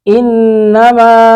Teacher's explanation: ما پر مد منفصل دو الف کھینچے گے